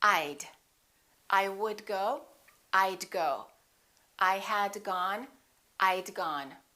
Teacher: let's practice contracting the word would i would sounds like i'd i would and i had sound exactly the same when they're contracted